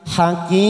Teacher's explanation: Hakim mat arid sukun kita panjangkan 4 ketuk.